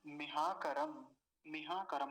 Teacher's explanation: और मकार पर ह्रस्व इकार है, जल्दी से ही बोला जाएगा, लंबा नहीं खींचेंगे